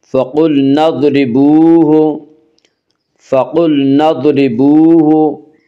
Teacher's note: ضاد کو پر پڑھیں گے، ضاد حروف مستعلیہ میں سے ہے، حروف مستعلیہ 7 ہیں جن کا مجموعہ خص ضغط قز ہے، یعنی خا صاد ضاد غین طا قاف ذا، یہ 7 حروف ہمیشہ ہر حال میں پر پڑے جاتے ہیں۔